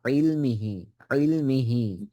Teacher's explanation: ইল গলায় ক্লটিসে আটকাইতে হবে। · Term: আইন